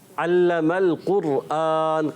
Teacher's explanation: علم القرآن قاف موٹے رکھنا ہے